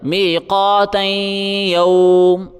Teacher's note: میم کے اوپر جو زبر ہے جب ہم وقف کریں گے تو وہ سائلنٹ ہو جائے گا